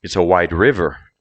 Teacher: did you notice how the stress goes on the noun